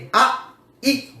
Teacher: 2 ஒலிகள் வருகின்ற ஒரு ஒலி கூட்டொலி. ஐ என்பதிலே அ, இ என்கின்ற 2 ஒலிகள் இருக்கின்றன